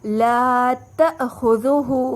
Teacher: ذال نوک زبان سے ادا ہوگا اور ہا پر الٹا پیش ہے تو اسے 2 کا مد دیں گے۔